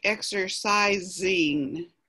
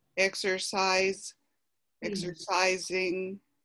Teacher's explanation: that last s it's really pronounced like a z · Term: z sound